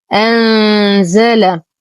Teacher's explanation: نون ساكنة وبعدها حرف الزاي، الحكم إخفاء حقيقي مع غنة كاملة مرققة